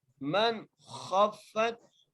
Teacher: خواہ کو موٹا کر کے پڑھا، خواہ کو فا سے ملا رہے ہیں